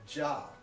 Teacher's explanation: the Z H sound is almost almost the same as the J in English except it ends just a little bit more openly